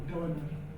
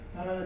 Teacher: you can omit D's in the ND sequence or not. So I would prefer to say Donner rather than Donder.